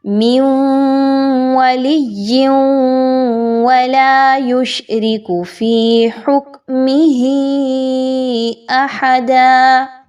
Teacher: سب سے پہلے نون ساکن کے بعد واو ہے اور پھر تنوین کے بعد واو ہے، تو اچھے طریقے سے ان دونوں کی ادائیگی رکھیے، مقدار کو کم نہیں رکھنا، دونوں کو برابر غنہ کرتے ہوئے پڑھنا ہے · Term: ادغام مع الغنہ